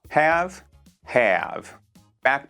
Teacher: 원래 철자에 없는 어 소리를 막 추가적으로 붙여서 말하거든요. have back 그래서 자연스럽게 안쪽 어금니를 많이 써요.